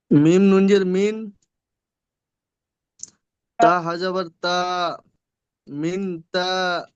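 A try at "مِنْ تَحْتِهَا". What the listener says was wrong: তা হাজাবার তা টান হবে না, তা হাজাবার তাহ। মিনটা গুণনা করতে হবে, কারণ নুন সাকিনের পরে তা এসে, এই সবে বলে দিলাম নুন সাকিনের পরে হরফে ইকফার 15টি অক্ষরের মধ্যে তা আসলে একালিপ পরিমাণ গুণনা করে পড়তে হবে। তাহলে মিন তাহ।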